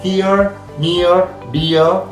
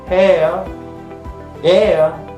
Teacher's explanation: It is of course a center. The glide is towards the center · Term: centering diphthong